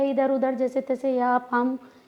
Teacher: नाक की सहायता नहीं, केवल मुख से सीधे सीधे बोला गया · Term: निरनुनासिक